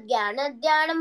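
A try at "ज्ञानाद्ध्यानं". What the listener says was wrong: జ్ఞానా ధ్యానం ఇక్కడ జ్ఞానా ధ్యానం నాకి దీర్ఘం ఉండాలి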